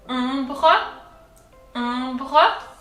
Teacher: The R comes from deep down, from the throat.